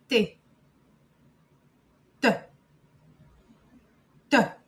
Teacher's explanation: C'est un son très clair et sec qui se forme quand ta langue touche rapidement l'arrière de tes dents du haut, puis se retire pour laisser passer l'air. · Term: le son T